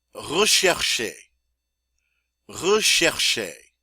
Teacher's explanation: Getting a lot of sh sound in there with that CH